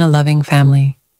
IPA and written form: ə ˈlʌv.ɪŋ ˈfæm.əl.i (a loving family)